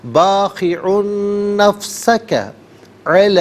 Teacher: مد منفصل کہتے ہیں، مد جائز بھی کہتے ہیں. منیمم اس کو 3 سے 4 حرکات کی مقدار کھینچ کر پڑھنا چاہیے، اور میگزیمم اس کو ناظرین 5 سے 6 حرکات کی مقدار کھینچ کر پڑھا جا سکتا ہے.